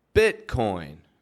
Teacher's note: I'm not pronouncing the T that's in the middle of Bitcoin am I that t vanishes all together I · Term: T vanishes altogether